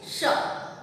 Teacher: तालव्य श को हम जब बोलते हैं तो हमारा तालु हमारे जीवा में सटता है।